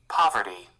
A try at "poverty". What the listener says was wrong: पावर्टी, पावर्टी। तो थोड़ा आ वाला साउंड आ रहा है, लेकिन हम लोग यहाँ पे अभी के लिए पॉवर्टी चलेगा, एक्चुअली पॉवर्टी चलेगा। पावर्टी जैसे भी बुलाइए। पावर्टी।